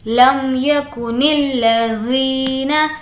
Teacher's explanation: ذی کو کھینچیں گے کیونکہ یہاں پر یا مدہ ہے